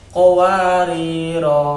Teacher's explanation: kalau berhenti pada bulatan yang lonjong dibaca dua ketukan